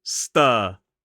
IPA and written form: stɜː (stir)